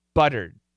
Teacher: this is a t but it's a flap t so when we say it fast it's going to sound like a d